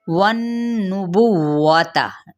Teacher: लेकिन वाव को होंठों की नातमाम गुलाई के साथ ताकि हरकत को लंबा नहीं करेंगे